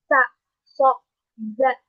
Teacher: mendesisnya kayak sa sh za. Nah, maka disebut sebagai sifat safir.